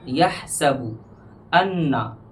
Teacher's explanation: अन्ना में गुन्ना होगा, एक अलिफ के बराबर गुन्ना में खींचना है